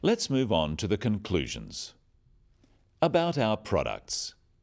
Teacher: Intonation is the way we pronounce sentences. Note the downward intonation at the end of sentences